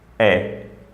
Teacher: It's commonly accepted that the English word which starts with a vowel, actually it starts with a glottal plosive.